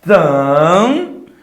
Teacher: esse an não tem nenhuma interrupção de ar. Como ele não tem nenhuma interrupção de ar, ele vira um dígrafo vocálico. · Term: som anasalado